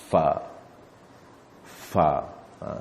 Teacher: Kita punya gigi bersentuh dengan kita punya bibir bawah ni. Fa. Itu dia. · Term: huruf Fa